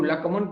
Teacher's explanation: श वो मूर्धन्य श नहीं है उसमें, और उसी वजह से मूर्धन्य श न होने से वो लक्मन पढ़ लेते हैं